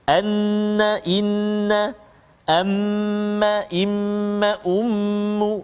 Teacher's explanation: tekanan udara ke pangkal hidung menyebabkan terhasil suara dengung